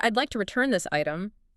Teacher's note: your voice went down at the end. It was a statement.